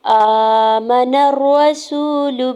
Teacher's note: نون کے زبر کو رام شدت کے ساتھ ملاتے ہوئے پڑھیں گے۔ را کے اوپر سنگل زبر کے بیس پہ را کو پر پڑھنا ہے